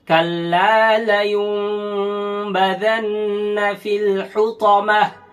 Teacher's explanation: অনেকে বা আসলে ছোট মিম দেখে একেবারে মুখ ঠোঁট লাগিয়ে দেয়, কিন্তু একেবারে ঠোঁট লাগবে না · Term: ইকলাব